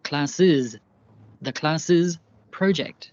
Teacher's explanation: Hear how I added a final is syllable to the end.